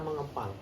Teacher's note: fonem K dan juga fonem NG itu berada pada daerah artikulasi yang sama, yaitu dorsovelar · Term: peluluhan fonem